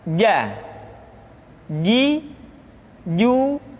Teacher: huruf j yang dikeluarkan dengan menyentuhkan tengah-tengah lidah dengan langit-langit